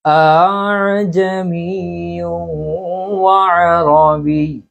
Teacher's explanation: অর্থাৎ প্রথম হামজাকে তাকিদের সহিত উচ্চারণ করা, প্রথম হামজাকে শক্তভাবে উচ্চারণ করা, পরবর্তী যে হামজাটা আছে এই হামজাকে আলিফ এবং হামজার দরমিয়ান অবস্থায় মাঝামাঝি অবস্থায় উচ্চারণ করা। এখানে মদ হবে না, আবার হামজা পুরোপুরি উচ্চারণ হবে না। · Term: তাসহিল বেলা মদ